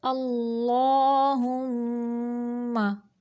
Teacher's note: लफ्ज़ अल्लाह का जुलाम है, इसको मोटा करेंगे क्योंकि इसके पिछले हरफ के ऊपर ज़बर है। अल्लाहुम्मा, हा को अक्सा हलक यानी हलक का वो हिस्सा जो सीने की जानिब है वहाँ से हा को निकालेंगे और मीम मुशद्दद का गुन्ना नाक की जड़ से निकालेंगे।